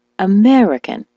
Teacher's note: the word American as you know is stressed on the me